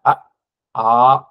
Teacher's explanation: நாக்கு அடக்கமா இருக்கும் எங்கேயும் போயி வர்ற காத்த வந்து தடுக்காது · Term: உயிரெழுத்துக்கள்